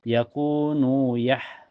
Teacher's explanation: Yakunu yah setelahnya ada ha sukun mutlak ya. Dan makhraj ha itu keluar dari tenggorokan ya. Sejajar dengan ain. Wasatul halqi tengah tenggorokan. Mempunyai sifat hamas dan lembut ya.